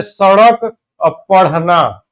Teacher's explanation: उत्क्षिप्त नाम इसलिए देते हैं कि इसमें बोलने में पहले जीभ ऊपर जाती है फिर नीचे आती है। पहले जीभ ऊपर बोल कर देखिए ण ऊपर से जाकर जीभ नीचे को गिरेगी तो इस वजह से इसका एक नाम उत्क्षिप्त व्यंजन है।